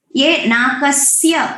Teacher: स्य जो है उसमें इंटोनेशन नहीं है, उसको नीचे नहीं लाना है।